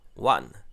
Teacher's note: On retrouve le a court typique des syllabes fermées et en consonne finale, le son n.